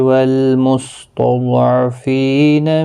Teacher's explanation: ضاد حروف مستعلیہ ہے، پر پڑھا جائے گا، اس پر قلقلہ نہیں ہونا چاہے